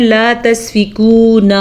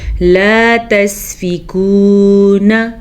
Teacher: آگے ہے جی لام زبر الف لا، لا تسفکون دماءکم، لا، لام زبر الف لا، الف مدہ، تسفکون، کاف پیش واو کو، یہ واو مدہ ہے، اسے لمبا کر کے پڑھنا ہے، جبکہ نون کے اوپر زبر ہے، نون کو لمبا نہیں کرنا۔ اکثر لوگ لفظ کی ادائیگی کرتے ہوئے آخری لفظ کو لمبا کر دیتے ہیں تو یہ غلطی ہو جاتی ہے، جیسے کہ لوگ پڑھتے ہیں لا تسفکون، اس نون کو لمبا کر دیتے ہیں، جبکہ یہ لکھا ہوا ہے لا تسفکون۔